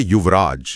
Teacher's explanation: जब इन दोनों को मिलाया जाता है तो युवन का जो आखिरी न है वो उच्चारण की सुविधा के लिए पूरी तरह से गायब हो जाता है। और वो बन जाता है युवराज।